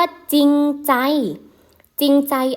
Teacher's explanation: คำควบกล้ำไม่แท้ประเภทที่ออกเสียงพยัญชนะต้นตัวแรกเท่านั้นนะคะ อ้าได้แก่อะไรบ้างคะจออ่าจอควบกับรอซอยควบกับรอ2ควบกับรอให้ไหมคะสอเสือควบกับร้อนนั่นเองนะคะเออมาดูกันที่ตัวอย่างจะได้เห็นชัดเจนนะคะตัวอย่างเห็นไหมคะคำว่าจริงใจจริงใจอ่านว่าจริงใจเขาไม่ออกเสียงรอเรือเลยนะคะต่อมาคำว่าศีรษะศีรษะเขาก็หันว่าศีรษะรอเรือในใส่ไปเท่ห์ๆเท่านั้นเองนะคะอ่ะไม่ออกเสียงเลยนะคะต่อไปสระน้ำค่ะมีน้ำกลั่นว่าสระน้ำใหญ่ไหมคะไม่มีใครอ่านนะคะว่า